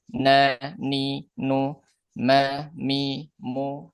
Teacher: huruf nun ujung lidah, huruf mim ee tetap di ee dua bibir, tapi ada sifat gunah mereka berdua. Yakni dia ee apa yang suara yang masuk ke rongga hidung.